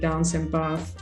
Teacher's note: the vowel in the word that is spelled 'a' so that is words like 'dance' or 'bath' for example is pronounced 'ah' how I was pronouncing it 'dance' and 'bath' in the standard